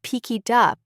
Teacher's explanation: Over-articulate them in slow practice. Really hit that K in pick it. Then speed up, keeping the contact but letting the airflow carry it to the next word. Think of it as connecting train cars. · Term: Linking